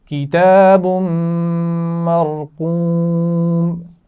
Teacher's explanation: اور را موٹی پڑھی جائے گی اور قاف بھی موٹا پڑھا جائے گا